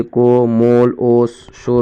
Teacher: واو مجہول جسے کھینچ کر نہیں پڑھا جاتا